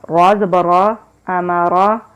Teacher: را کو ہم موٹا پڑھیں گے، را کے اوپر جب زبر آتی ہے تو اس کو ہم موٹا پڑھتے ہیں، اس کی آواز پر ہوتی ہے